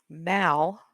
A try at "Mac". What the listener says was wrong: Other than you keep putting an L in my name. It's Mac.